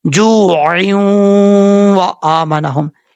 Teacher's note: یہاں پر یہ وہی غنہ ہے جو آپ کو پہلے بار بار بتا چکا ہوں کہ دو زیر، دو زبر، دو پیش کی تنوین کے بعد اگر واو آ جائے تو وہاں پر ادغام میں یرملون ہوتا ہے اور غنے کے ساتھ ہوتا ہے۔ یہاں پر بھی وہی صورتحال ہے، دو زیر کی تنوین کے بعد واو آ رہا ہے جو کہ حروف یرملون میں سے ہے۔